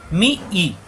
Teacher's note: ইয়ার মাকরাস হলো জিব্বার মাঝখানে উপরে তালুতে